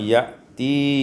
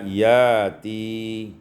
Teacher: ibdalul hamzati alifan, ditukar hamzah dengan alif sehingga dibaca yati.